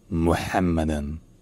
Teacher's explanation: Le M est bel et bien un M qui est long.